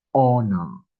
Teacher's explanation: when we pronounce this word right we don't say the h we start saying the o okay so we pronounce it as honor so the first sound is O.